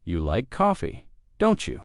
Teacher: making your voice rise slightly at the end of the tag question